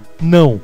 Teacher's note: O O fica parecido com o U, no caso semivogal, portanto, nós colocamos o W.